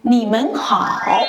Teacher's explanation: Men is pronounced with neutral tone, which is light and short.